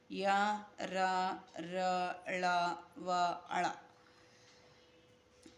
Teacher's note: కలిగిన అక్షరాలు అంటే అంతస్థాలు అంటే లోపల నుంచి పలికేవి అన్నమాట ఇవి కొంచెం అచ్చుతో కూడి కొంచెం కొంచెం అచ్చు యొక్క ధర్మాన్ని కలిగి ఉంటాయి కొంచెం హల్ యొక్క ధర్మాన్ని కలిగి ఉన్నటువంటి అక్షరాలు య ర ర ళ